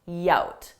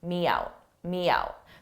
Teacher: I add a y in front of out